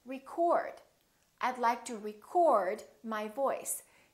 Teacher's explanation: the O is fully pronounced it's prolonged and it's stressed